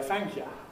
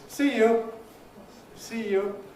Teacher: In London, it gets weakened further, it gets weakened to ya. This is not really standard.